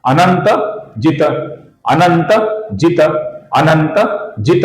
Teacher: ये त अपूर्ण त है, किंतु ये पद के अंत में आया हुआ है, इसलिए हम इसका लगभग पूरा उच्चारण करेंगे। पूरा उच्चारण भी नहीं करेंगे, अर्थात तो ऐसा पूरा उच्चारण नहीं करेंगे और तो ऐसा पूरा अपूर्ण उच्चारण भी नहीं करेंगे।